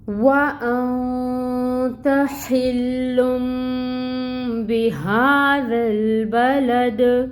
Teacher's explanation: دال کی حرکت کو ساکن کریں گے کیونکہ آگے آیا مبارکہ مکمل ہو رہی ہے، ہمیں وقف کرنا ہے، تو دال ساکن ہو جائے گا اور یہاں پہ دال پہ قلقلہ ہوگا کیونکہ حروف قلقلہ میں سے ہے۔